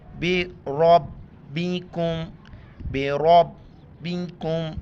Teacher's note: چھوٹی کاف باریک کر کے پڑھیں گے اور را کو موٹا کر کے پڑھیں گے زبر کی وجہ سے